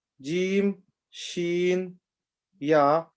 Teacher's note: Middle of the tongue when it touches the hard palate. So the middle of the tongue, when it's touching the palate on the top, is jim, shin, ya.